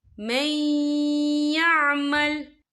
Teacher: اہل الکتاب من یعمل، یا دیکھیں میں، یہاں نون ساکن ہے، نون ساکن کے بعد جو ہے یا آ رہا ہے، اور یا جو ہے حروف یرملون میں سے ہے، تو یہاں پر ادغام ہوگا، تو ہم اسے تھوڑا سا غنی کے ساتھ پڑھیں گے۔